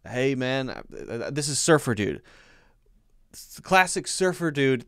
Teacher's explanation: everything he says kind of has a slightly upward inflection when he talks